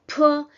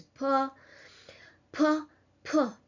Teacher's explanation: Once again, you don't need to add too much air while pronouncing this sound. So in English it's aspirated like p, and much air comes out. In Russian we have a mild version of this sound